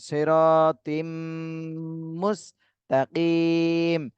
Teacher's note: এখানে তানভিনের পরে ঈদগামে বা গুন্নার হরফ মিম, এজন্য গুন্না সহ মিলাতে হবে